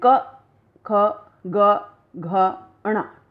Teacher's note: तो हम महसूस करेंगे कि ये ध्वनियाँ जो हैं हमारे कंठ से निकलती हैं, हमारे मुख से के भीतर से ये ध्वनियाँ निकल रही हैं, गले से ये ध्वनियाँ निकलती हैं। तो इन ध्वनियों को क, ख, ग, घ, ण, इनको कंठ ध्वनियाँ कहा जाता है